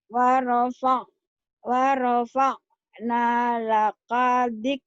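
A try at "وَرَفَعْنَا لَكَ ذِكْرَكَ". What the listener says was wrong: Laka pendek. Wa rafa'na laka dzikraka. Lakanya pendek. Warofa jangan waropak. Jangan waropak. Warafa'na.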